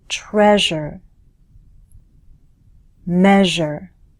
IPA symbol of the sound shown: ʒ